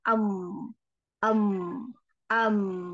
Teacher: Bagian luar ya, perut luar bibir itu dirapatkan maka menghasilkan huruf mim. Ma atau kalau akan terasa ketika kita sukunkan am am, nah itu rapat seperti itu ya.